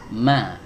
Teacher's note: Langsung masuk ke huruf mim, ma. Nah, huruf mim keluar dari syafatan, dua bibir atas ditempelkan dengan bibir bawah, kemudian dibuka